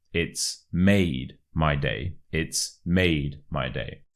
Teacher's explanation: you really want to stress the word made